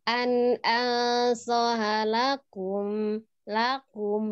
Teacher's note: Ada la-nya tuh naik ya.